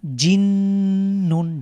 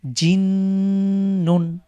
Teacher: জিম শক্ত হবে এবং নুনের সাথে এসে ওয়াজিব গুন্না